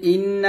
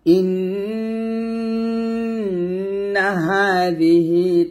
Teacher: এখানে ইন্না গুণনা করবেন এটা হচ্ছে ওয়াজিব গুণনা